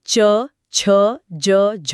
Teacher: जब हम क बोलते हैं तो गला सिर्फ एक पल के लिए बंद होता है और खुल जाता है। लेकिन जब हम च या छ बोलते हैं तो हमारी जीभ तालू को सिर्फ छूकर वापस नहीं आती। तो फिर क्या होता वो इतनी करीब आ जाती है कि बाहर निकलने वाली हवा को जीभ और तालु के बीच की बहुत ही संकरी जगह से रगड़ खाते हुए निकलना पड़ता है। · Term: स्पर्श संघर्षी